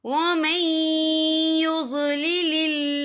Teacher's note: यहाँ अल्लाह का नाम बारीक पढ़ा जाएगा क्योंकि अल्लाह के नाम से पहले ज़ेर है।